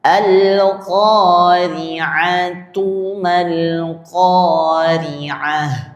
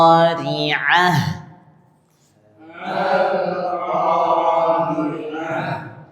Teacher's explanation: kalau dia diwasalkan dibaca lanjut maka bacanya ta. Kalau dia disukunkan maka bacanya ha yang di dada atau di pangkal tenggorokan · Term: ta marbutah